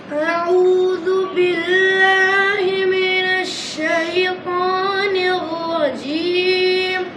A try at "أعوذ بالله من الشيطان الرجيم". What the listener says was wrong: এই যে চাপা চাপা ভাব আছে, মিনাস না, মিনাস স্পষ্ট, মিনাস এভাবে। আউ না তো, আউ আউ এভাবে বলেন।